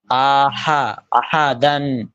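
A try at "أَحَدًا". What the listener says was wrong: টান হয়ে যাচ্ছে, টান শুধু ডালে, শুরুতে কোনো টান নেই। হামজা জবর আ, আ জবর হা, আহা, এটা প্রথম দুইটা কোনো টান নেই। আহা, আহা, আহা, তাড়াতাড়ি।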